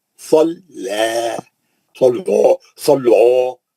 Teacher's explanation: خالی صاد موٹا ہے، لام موٹا نہیں ہے